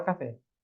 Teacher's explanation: A sílaba tônica é o fé. Por isso que a gente chama de sílaba tônica e está na última. Ali eu chamaria de oxítono.